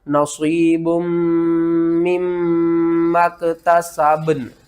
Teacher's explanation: یہاں پر جو ہے نا با، اس کے اوپر آپ نے قلقلہ کرنا ہے، اور نون با کے اوپر قلقلہ کر کے نون کے ساتھ ملانا ہے